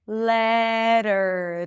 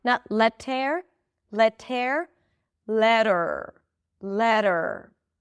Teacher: Let's talk about the e r when it appears after a flap t. A flap t actually sounds like a d as in the word letter. Let letter. So it sounds like a d. The tip of the tongue goes up to touch the upper pallet.